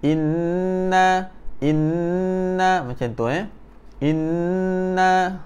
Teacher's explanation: Okey, nun apabila nun ataupun sabdu, nun ataupun mim yang bertanda sabdu, kita kena tekan dan kita kena dengung sikit